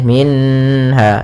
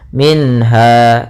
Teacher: maka harus jelas suara nunnya tidak boleh tahan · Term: izhar halqi